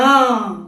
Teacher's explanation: तो जब हम ट वर्ग के अक्षर बोलते हैं तो वो मुंह के ऊपर आ छूते हैं और उससे आवाज निकलती है।